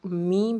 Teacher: ہونٹوں کی خشکی سے ادا ہونے والا حرف میم ہے